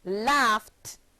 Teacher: The ED ending of unvoiced or voiceless sounds take on a t sound when placed at the end of verbs.